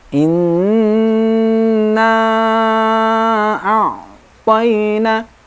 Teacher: Pada ayat yang pertama, yang perlu kita ingat adalah bacaan gunnah. Inna nun syiddah, bacaan gunnah, dengung lebih panjang daripada mat tabi'i.